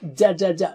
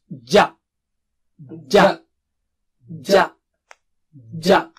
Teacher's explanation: Touch the middle of the tongue. That's how Arabic Jim is. To the palate or roof of the mouth.